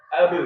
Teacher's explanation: Kalau kayak huruf ba, jadi ke dalam kondisi sukun ba ini harus dipantulkan ya.